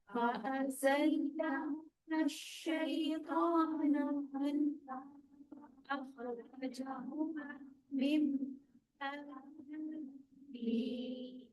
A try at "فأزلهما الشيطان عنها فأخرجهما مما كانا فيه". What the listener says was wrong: اچھا دیکھیے شیطان نہیں ہے شیطانو. ٹھیک ہے اسی طرح میما آپ نے ہول بھی کرنا ہے.